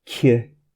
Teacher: the K tends to be quite strongly aspirated